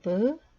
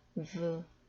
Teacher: 파열음의 베트는 윗입술과 아랫입술이 파열을 일으키면서 즉 터지는 듯한 그러한 현상을 통해 브라고 발음이 되고 그 아래 마찰음 다교시가 없는 베트는 v 윗 이빨과 아랫입술이 마찰을 통해서 발음이 됩니다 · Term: 파열음과 마찰음